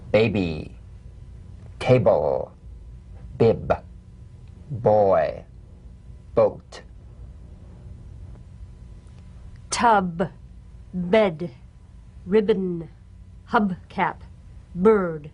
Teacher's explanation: Play this on the springing away from contact, not by pressing the lips together. You'll feel a gentle voiced pulsation on the lips like a delicate, crisp tap. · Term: drumbeat staccato consonant, drum beat B